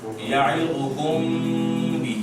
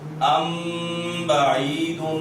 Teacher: میم ساکن کے بعد با ہے تو غنہ ہوگا